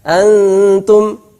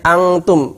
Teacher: Ketika membaca an itu sudah persiapan ta.